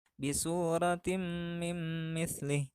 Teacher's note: Contoh bacaan idghamnya terdapat dua, yaitu tanwin menghadapi mim, maka tanwin di sini dibaca lebur karena menghadapi huruf idgham yaitu mim